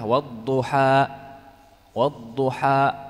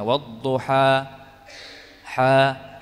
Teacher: Hamzah karena penahanan nafas tadi berkonsekuensi kepada apa merapatnya pita suara kita tahan nafas kita dengan merapatkan dua pita suara maka di situ akan muncul Hamzah